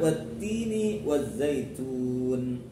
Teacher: Wattini ini alnya al-syamsiyah. Kemudian wattini kasrah diikuti ya sukun, itu contoh dari mad asli atau mad tabi'i panjang 2 harakat. Kemudian wazzaitun alnya al-syamsiyah lagi karena setelah al ada hurufnya bertasydid yaitu za-nya bertasydid.